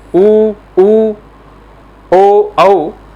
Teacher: गोलाकार आकृति को हम बोलते हैं व्रत, सर्कल को बोलते हैं। यानी ऐसे स्वर जिनका उच्चारण करते समय होठों की शेप जो है गोलाकार आकृति हो जाए, उसे हम बोलेंगे व्रत मुखी स्वर।